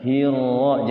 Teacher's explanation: Tapi getarannya itu ro itu dia tidak terlalu lama bila guna. Hiro, jangan sampai hiro, jangan terlalu lama ya getarannya itu. · Kayak sifat ro tuh, sifatnya kan dia takrir ngegetar.